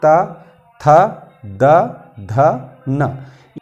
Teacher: इनको बोलते समय हमारे जीभ का जो अंतिम सिरा है वो दांत को स्पर्श करता है। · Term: दंत्य वर्ग